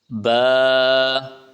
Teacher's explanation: دونوں ہونٹوں کو ملا کے پڑھیں